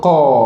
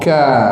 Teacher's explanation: Kalau qa tu di dalam sikit, ka tu dia ke depan dah.